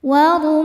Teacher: Huruf ra dibaca secara tafkhim karena berharokat dhammah. Cara bacanya ditebalkan. Wa rumman. Man ketika berhenti hukumnya mad arid li sukun.